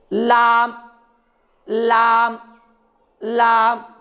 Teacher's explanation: لام کا مخرج ہے زبان کی نوک کا کنارہ، زبان کی نوک کا کنارہ اوپر کے مسوڑوں کو لگنے سے لام ادا ہوتا ہے۔ جیسے یہ زبان کی نوک ہے، اب اس زبان کی نوک کو ہم کو اوپر کے مسوڑوں کو لگانا ہے اور مسوڑے یہ ہیں۔